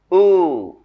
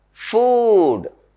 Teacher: the back of the tongue is raised